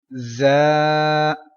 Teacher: So za is superior letter, so you have to pronounce with whistle.